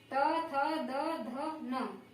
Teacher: और इसी तरह से ये दंत्य त, थ, द, ध, न, इनका उच्चारण करने में जीवा ऊपरी वाले दांतों से टकराती है